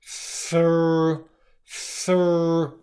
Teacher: We stick our tongue out between our teeth for the th sound, and then what we do is we pull it back into our mouth as our bottom lip comes up to make the R sound · So there's this simultaneous movement going on. The tongue is going back and the lip is going out.